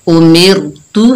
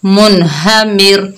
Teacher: रा साकिन है, उससे पहले जेर आया तो रा को बारीक पढ़ा